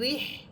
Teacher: হা হরফের বলার সময় হা এর আওয়াজ হবে এবং বাতাস যে মুখ থেকে বের হবে ওই বাতাসেরও শব্দ হবে।